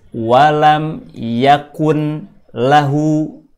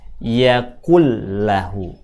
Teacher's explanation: Yang dimasukkan adalah makhraj dan sifatnya. Satu huruf, makhraj dan sifatnya dimasukkan ke huruf depan. Kemudian setelah dimasukkan, yang muncul adalah jadi bunyi satu huruf yang bertasdid. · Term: bacaan idgham